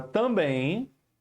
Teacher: também é um oxítona Ou seja a sílaba forte é na última tá sendo acentuada porque termina em nem também Parabéns ninguém são